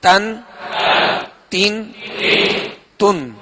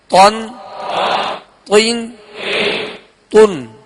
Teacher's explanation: تا کو باریک اور تو کو پر یعنی موٹا پڑھیں گے